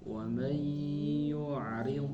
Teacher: Linaftinahum fi linaftinahum fi wa man yu'rid. Nah, huruf dod sukun tidak memantul atau tidak qalqalah.